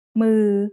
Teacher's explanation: This is a mid-tone word because it's a low-class initial consonant and has a live syllable ending.